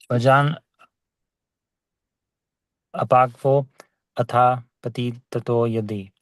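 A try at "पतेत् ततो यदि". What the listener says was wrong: Patit nahi, patet. Patet tato yadi.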